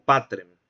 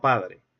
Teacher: este caso tan particular de lenición céltica o de sonorización de consonantes oclusivas sordas, ocurrió también en palabras como patrem, por ejemplo.